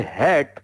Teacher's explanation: अपने हलक में रोक के ये एच की आवाज आपने प्रोनाउंस की है. Therefore it is a consonant sound.